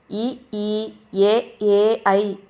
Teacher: வாய் திறக்கும் முயற்சியுடன் நாக்கொடைய அடி ஓரமானது மேல்வாய் பல்லை பொருந்தும் முயற்சியால் பிறக்கிறது